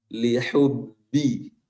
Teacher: huruf ba-nya harus tegas, jangan cenderung ke mim, karena biasanya kalau ba bertasydid, kebanyakan yang saya dengar para pembaca Al-Quran itu seakan-akan huruf ba-nya itu ada campurannya ke mim.